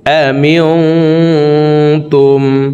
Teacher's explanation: নুন সাকিনের পরে ইকফার 15টি হরফের ভিতরে একটি হরফ তা আসছে, এই কারণে এই নুন সাকিনকে নাকের ভিতরে লুকাইয়া গুন্নার সহিত পড়ব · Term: ইকফা গুন্না